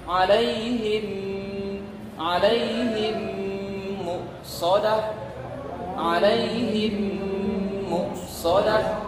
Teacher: Satu mimnya mati, yang kedua mimnya berbaris. Nah, idgham mimi ini dibaca gunnah. Gunnah itu dengung. Keluarnya suara dari hidung.